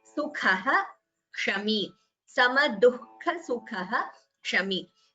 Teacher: a visarga is followed by ksha, the visarga is chanted completely